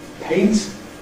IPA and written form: peɪnt (paint)